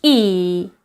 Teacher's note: our lips are spread when we produce this vowel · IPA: /iː/